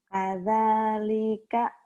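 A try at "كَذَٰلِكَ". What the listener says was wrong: Linya pendek.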